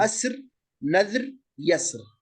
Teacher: الراء الساكنة إذا سبقت بساكن سبقت بفتحة فهي مفخمة · ومن قال بالتفخيم نظر إلى وجود الفتحة قبل الحرف الساكن